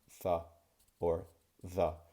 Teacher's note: In order to make a th or a the sound correctly in English, I really need to make sure that the tip of my tongue is protruding from in between my teeth just a slight bit. So when I say th or the, you can see how my tongue comes out and I go th or the.